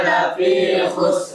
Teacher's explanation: Roknya dibaca tafkhim, tebal karena sukun ya.